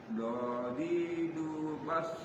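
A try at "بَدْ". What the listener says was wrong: Bad. Jangan ada s-nya, bad.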